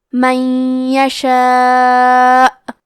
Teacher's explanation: مد واجب متصل کا معنی ہے کہ حرف المد اور اس کی وجہ جو کہ حمزہ ہے دونوں ایک ہی کلمہ میں ہوں. اس مد میں ہم اپنی آواز 4 مد کے برابر لمبی کریں گے · ادغام کا معنی ہے حرف کو حرف میں داخل کرنا تو ہم نون ساکن کو یا میں ملا کے غنہ اور تشدید کے ساتھ یہ حکم کو ادا کریں گے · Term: ادغام بغنہ